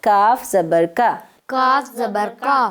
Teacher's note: کاف میں الف کا ساؤنڈ آئے گا، واو کا ساؤنڈ نہیں آئے گا، واو کی آواز نہیں آئے گی، الف کی آواز آئے گی، ٹھیک ہے۔